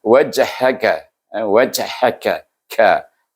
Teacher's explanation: Itu huruf kaf, mahrajnya di depan huruf qaf.